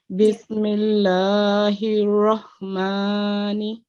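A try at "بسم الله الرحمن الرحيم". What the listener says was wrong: But here also you have to make the same thing, a thick raw with the stress sound. And yeah, over here, this is the ayn sound from the middle of the throat.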